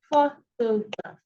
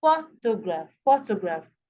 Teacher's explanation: the first syllable is emphasized more than the others